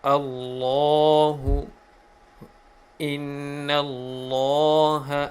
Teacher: the word of Allah always pronounced heavily with full mouth